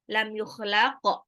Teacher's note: Qafnya ini qalqalah pantul.